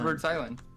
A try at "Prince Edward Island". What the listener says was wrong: I don't pronounce the S part.